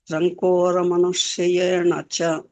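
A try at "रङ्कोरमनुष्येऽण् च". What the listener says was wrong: See, you are telling Rankoramanushyena cha. You are telling nacha. It is mcha. That is Rankoramanusyencha. Manushyencha. That is halanta. Manushyen cha.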